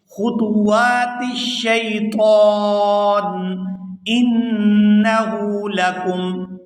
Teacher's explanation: نون مشدد پر غنہ کریں گے اور آگے ہا پر الٹا پیش ہے تو اس کو کھینچ کر ادا کیا جائے گا انہو لکم عدو مبین۔